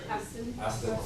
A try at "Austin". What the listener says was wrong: Aston. Or Ustin, depending what our short vowel was. But it's Austin. It's that longer sound. Austin. Austin.